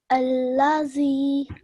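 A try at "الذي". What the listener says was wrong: Okay, so you naturally went into a Z sound, a Z sound, which is very common for Urdu speakers. But we are doing Arabic, so try and pick up on that pronunciation, okay? Alladhi.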